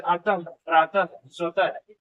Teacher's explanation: विसर्ग का उच्चारण ह होता है,